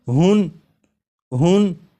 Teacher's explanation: یہاں پر ہا کے اوپر 2 پیش یعنی تنوین ہے، تو جب ہا کو پڑھیں گے تو آخر میں نون ساکن کی آواز آئے گی